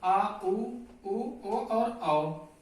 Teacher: पश्च स्वर जो जीभ के पिछले भाग से बोले जाते हैं